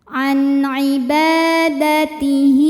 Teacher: Karena ada hak dhamir yang diapit 2 huruf hidup dan huruf setelahnya bukan hamzah ya, bukan a, bukan i, bukan u. Maka hak dhamirnya ini kita panjangkan 2 harokat. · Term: mad silah qasirah